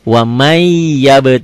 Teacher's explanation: kan wamai ditahan Idgham Bighunnah wama Iya tulisan dan bacaannya beda Tulisannya ada bunyi n-nya bacaannya n-nya hilang melebur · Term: Idgham bigunnah